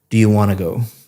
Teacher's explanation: Wanna go sounds like one word, wanna go cuz you're connecting all the speech up. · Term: connected speech